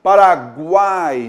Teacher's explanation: Na ordem, semivogal, vogal ao centro e outra semivogal. Tá legal? Então a gente vai ter, nesse caso, o tritongo, o som vai ser sempre central, vai ter a vogal, e nós teremos nas extremidades a semivogal.